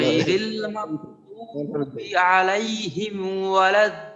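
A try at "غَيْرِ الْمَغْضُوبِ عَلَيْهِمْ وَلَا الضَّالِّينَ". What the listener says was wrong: মাশাআল্লাহ মাশাআল্লাহ, ও ভাই এইখানে একটা বিষয়, সেটা হলো এই হামজায়ের জায়গায় আইন হলো, আর আইনের জায়গায় হামজা হলো। হ্যাঁ, এই বিষয়টা কি খেয়াল রাখা। আন হামজার ক্ষেত্রে আপনার আওয়াজটা কোথাও বাধাগ্রস্ত হবে না।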